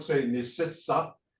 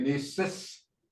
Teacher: You don't say ni sissa. You say ni sis. That A is kind of voiceless.